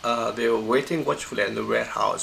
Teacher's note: And then the first stress syllable is pronounced in the high pitch. This is the first stress syllable, so it goes up from mid to up over here.